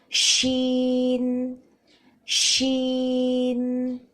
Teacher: حرف شین کی ادائیگی کے لیے زبان کے درمیانی حصے کو اوپر کے تالو کی طرف بلند کیا جاتا ہے. ش اس طرح پھیلتی ہوئی آواز سنائی دیتی ہے